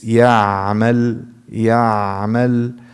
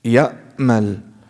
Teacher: Ayn, if you close it completely, it becomes a hamza.